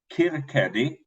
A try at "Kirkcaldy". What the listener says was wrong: It's Kirkcaldy. Yeah, the L. You don't pronounce the L.